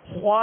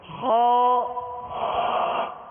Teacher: منہ کھول کر خو، جڑ زبان اوپر اٹھائیں گے تو خود بخود پر ہوگا